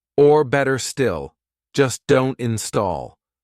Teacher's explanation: We don't pronounce this R either because look, this is a consonant. So if an R comes before a consonant, we don't say it.